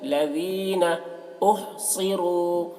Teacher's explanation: فقراء الذین، ذال کو باریکی کے ساتھ، لذین لذین نہیں، لذین احصروا، صاد کو پر پڑھیں گے کیونکہ صاد حروف مستعلیہ میں سے ہے